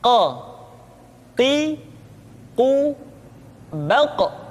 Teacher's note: huruf qaf diucapkan dengan cara menyentuhkan pangkal lidah kita dengan langit-langit bagian belakang kau tipu toh kok diucapkan dengan suara yang tebal dan dalam